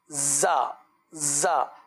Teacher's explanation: زا میں جو ہے ہلکی سی سیٹی کی آواز، کیونکہ صفت صفیر ہے